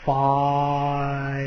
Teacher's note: So you normally want to, if it's a diphthong that starts with an ah, like the I in fire, it's actually ah-e, fire.